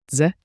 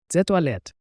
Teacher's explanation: A quick DZE like J with a soft D.